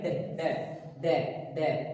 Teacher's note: जिभ्या की नोक आगे से उठती है और आगे की तरफ टकराती है। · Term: उत्क्षिप्त